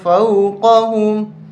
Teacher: قاف کو بھی موٹا کرنا ہے